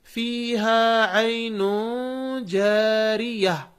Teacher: یہاں پر گولتا ہے، ہم رک رہے ہیں تو اس گولتا کو ہا ساکنہ پڑھ رہے ہیں. اس میں نون پر، عین میں نون پر تنوین ہے، ہم اخفا کر رہے ہیں، تنوین کے آواز کو چھپا رہے ہیں، اس لیے کہ اس کے بعد جیم ہے اور وہ جیم حروف اخفا میں سے ہے. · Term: ہائے ساکنہ